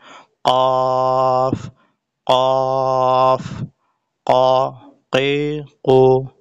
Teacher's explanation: 4 নম্বর মাখরাজ জিহ্বার গোড়া, জিহ্বার গোড়া তার বরাবর উপরের তালুর সাথে লাগিয়ে একটি হরফ উচ্চারিত হবে কফ।